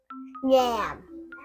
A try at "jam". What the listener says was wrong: In Thai, we call yam. Right. But in English, we do not call yam. We call jam.